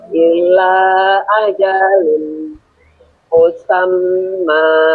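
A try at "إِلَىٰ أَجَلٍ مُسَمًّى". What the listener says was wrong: Ilahnya panjang. Ilahnya panjang. Ila ajalim.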